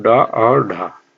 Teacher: इसमें जीभ की नोक उलट कर मूर्धा को छूकर मुख द्वार को झटके से खोलती है। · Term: उत्क्षिप्त व्यंजन